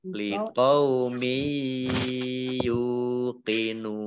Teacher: maka menjadi mat ariz lis sukun, dibaca panjang 2 harokat, 4 harokat atau 6 harokat